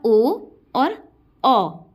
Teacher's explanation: ओ और औ ये है कंठ औष्ठ्य। कंठ औष्ठ्य मतलब कंठ से और ओष्ठ से दोनों का ही प्रयोग हो रहा है इसको, इस लेटर को निकालने में, बोलने में।